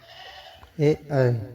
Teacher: ए ऐ कंठ तालव्य कंठ प्लस तालु से घोष है और अल्पप्राण है।